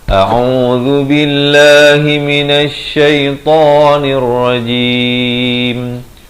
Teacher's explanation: Di pangkal kerongkong, ain di pertengahan kerongkong beri dhammah, zal di hujung lidah